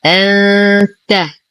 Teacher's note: لدينا نون ساكنة وبعدها حرف التاء، الحكم إخفاء حقيقي مع غنة كاملة مرققة